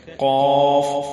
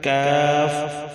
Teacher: تالو کے نرم حصے سے قاف اور تالو کے سخت حصے سے کاف ادا ہوتا ہے۔